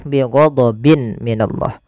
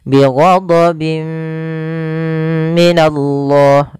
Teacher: disertai dengan gunnah masuk ke rongga hidung kita. Bi ghadabim minallah sambil ditahan 2 harokat. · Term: idgham bi gunnah